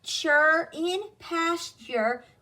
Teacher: the T sounds like a C-H, and the U-R-E, the U-R, sounds more like in nurse